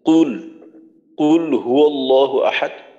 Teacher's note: কফের পেশের উচ্চারণটা যেন স্পষ্ট করে আমাদের হয় যেন কাফের মত কুল হয়ে না যায়